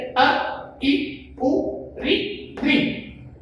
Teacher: ह्रस्व स्वर 5 होते हैं जो एक मात्रिक कहलाते हैं, यानी इनके बोलने में कम से कम समय लगता है।